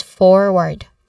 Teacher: So the stress here is on the first syllable for, so it is forward.